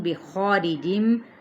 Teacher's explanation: خا پر الف مدہ اس کے ساتھ پر ہو جائے گا